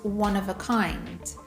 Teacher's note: We don’t say “of” we say “uv” or even just a schwa “uh” sound.